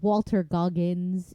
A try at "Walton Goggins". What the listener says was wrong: Not Walter. Walter would be normal. Walton. Goggins.